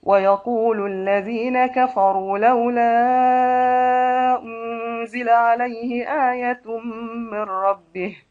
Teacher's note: ورش بإشباع المنفصل مع ثلاثة البدل